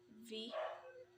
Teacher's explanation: the voiced labio Dental fricatives V